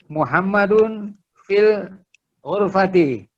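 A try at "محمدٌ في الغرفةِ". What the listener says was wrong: Mumtaz ya.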